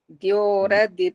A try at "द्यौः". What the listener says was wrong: नहीं, फिर द्यो बन गया। द्यौ बोलना, द्यौ।